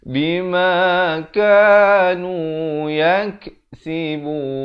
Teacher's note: Yak ada bunyi angin, itu bunyi hamas.